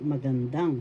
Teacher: The third syllable has the accent magandang.